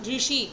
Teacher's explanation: ऋषि का उच्चारण किससे होता है? मूर्धा से होता है।